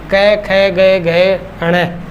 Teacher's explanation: ये पांचों के पांचों कहां से निकलेंगे? गले से। कंठ से निकलेंगे।